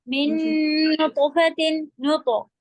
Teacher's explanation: नुतो तो का कलकला हैवी होगा